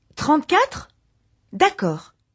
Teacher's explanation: copy that rising and falling intonation